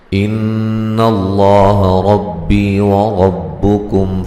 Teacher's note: یہاں نون مشدد پہ غنہ ضروری ہے، لفظ اللہ کو موٹا ادا کریں گے، اس سے پہلے حرف پر زبر ہے